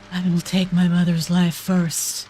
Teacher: Did you hear the breathy voice, the breathy AI voice? · Like, it's just got no inflection change.